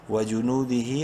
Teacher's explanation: کھڑی زیر کی وجہ سے ہا کو بھی ایک الف برابر لمبا کرنا ہے. وجنودہ اور وقفاً وجنودہ پڑھا جائے گا.